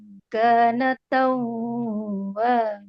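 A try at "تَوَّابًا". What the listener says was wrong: Wnya dobel saja gak boleh tahan. Bukan idgham ghunah.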